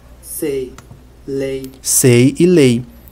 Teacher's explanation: mesmo do a com i do português vai cai cai depois nós temos o ditongo decrescente ei